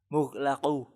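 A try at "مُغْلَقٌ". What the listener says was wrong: Coba perbaiki qafnya. Mughlaqun.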